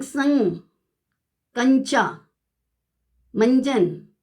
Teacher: जैसे हम बोलते हैं संग, कंचा, मंजन, तो ध्वनि जो होती है ना मुंह के साथ साथ नोज से भी आती है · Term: अनुनासिक